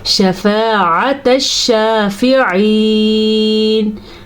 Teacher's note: ठीक है, अगर कोई इसको तनफ़ाउ हुम पढ़े या खुम पढ़े तो वो गलत है। शफ़ाअत शाफ़िईन अलिफ से पहले ज़बर है तो ये अलिफ मद्दा है, तो इसे खींच के पढ़ेंगे।